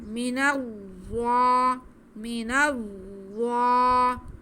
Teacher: میم کے نیچے زیر، نون پہ زبر اور آگے ضوا پہ شد ہے تو نون کو ہم ضوا سے ملا لیں گے. ضوا میں سیٹی کی آواز بالکل نہیں آئے گی، صرف ہم نے ضوا کو نرمی سے پڑھتے ہوئے موٹا کر کے پڑھنا ہے.